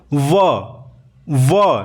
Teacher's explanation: यानी कि इसमें दांत और होठ का काम हो रहा है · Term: दंतोर